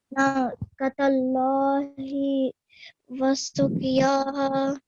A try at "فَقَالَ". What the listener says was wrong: So here, faqa, make sure you prolong it for 2 seconds, okay? So yo was short. Faqala. Because qaf is carrying a fatha stroke, right? And it's followed by the alif of elongation. So you have to prolong it for 2 seconds.